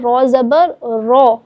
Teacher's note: رو کے اوپر جب زبر آ جائے تو رو کو پر یعنی موٹا کر کے پڑھیں گے